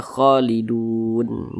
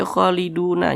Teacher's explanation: berhenti atau berwakaf ya tepat di huruf nun huruf nun tidak dibaca panjang Makanya kita sukunkan sehingga dibaca kholidun jangan dibaca kholiduna jangan tapi kita baca kholidun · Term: Mad Arid Lis suukun